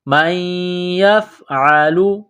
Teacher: جَزَاءُ مَن يَفْعَلُ، میم کو یا کے ساتھ ملانا ہے، نون ساکن کے بعد یا ہے، مشدد ہے تو یا میں سختی کرنی ہے